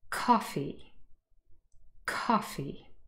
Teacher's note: The first syllable is louder, a little bit longer, and easier for us to hear because it is the stressed syllable in the word.